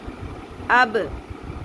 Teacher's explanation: با ساکن قلقلہ ہوگا